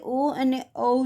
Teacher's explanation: ઓ અને ઔ છે એ કંઠ્ય અને હોષ્ઠ્ય છે, એટલે કે ગળું અને હોઠથી એનું ઉચ્ચારણ થાય છે